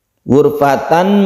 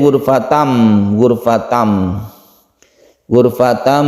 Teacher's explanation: Ghurfatan biyadi tanwin bertemu dengan ba disebut iklab dan ada tandanya di sini, ada mim yang kecil di atas ba, ini berarti cara membacanya itu tanwin dibalik menjadi m. Ghurfatan menjadi ghurfatam, ghurfatam dan didengungkan.